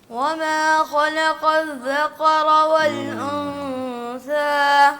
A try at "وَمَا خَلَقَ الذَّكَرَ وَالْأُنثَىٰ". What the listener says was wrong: ایک تو جلدی والا مسئلہ آپ صحیح کریں, اور دوسرا وما میں آپ نے وہی ناک میں آواز لے گی. خالا کا خا موٹا ہے, تھوڑا سا موٹا کریں اس کو.